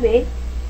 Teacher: y cerrada el fonema a es una vocal central y abierta el fonema B es una consonante oclusiva sonora y bilabial